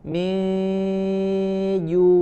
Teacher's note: huruf jim dari tengah lidah ya, wasatul lisan